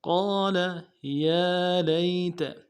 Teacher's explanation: یا کے بعد کھڑا زبر ہے، ایک الف مدار میں کھینچیں گے، لئی میں یا لین ہے، بغیر کھینچے پڑیں گے، تا کو نرم سے ادا کریں گے۔